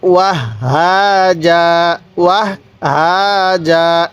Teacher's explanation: এখন যদি আমরা এখানে ওয়াকফ করি যদি ওয়াকফ করতে চাই তাহলে আমরা এই দুই জবর যে আছে এই দুই জবরের মধ্য থেকে এক জবরকে বাদ দিব, আরেক জবরের মধ্যে এক আলিফ টান দিব